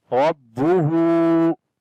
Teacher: ra we read in heavy sound and on the ba we make bit strong sound.